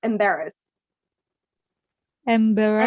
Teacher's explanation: embarrassed doesn't pronounce the E, embarrassed. So you say the D directly.